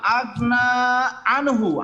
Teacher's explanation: আনহুতে আমরা নুন সাকিনের পরে হা আসার কারণে ইজার স্পষ্ট করে গুন্না ছাড়া পড়লাম